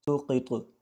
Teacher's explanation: طا بھی حروف قلقلہ میں سے ہے تو اس پر بھی جھٹکا دے کر وقف کرنا ہے